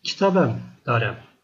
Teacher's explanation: Yine hem de anlamını katan sözcük genelde şeyden sonra düşüyor arkadaşlar. Bir sessiz harften sonra genelde bu baştaki he sesinin düştüğünü görüyoruz.